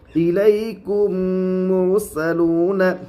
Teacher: میم کے اوپر تشدید ہے، میم کے اوپر جزم ہے، میم ساکن کے بعد میم ہے، اس لیے میم کو میم سے ملا کر گنہ کے ساتھ پڑھیں گے۔ اس کو ادغام شفوی کہتے ہیں۔